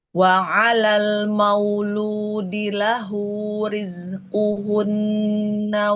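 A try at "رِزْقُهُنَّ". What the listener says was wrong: Saat mengucapkan huruf dengan * kasrah*, jangan menarik bibirmu ke belakang. * Riz*, jangan meringis.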